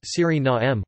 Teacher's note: In Dutch, the official language of Suriname, the pronunciation is Suriname, with the main stress on the third syllable and a schwa terminal vowel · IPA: [ˌsyriˈnaːmə]